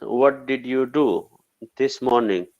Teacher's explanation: it sounds like ja when you connect both words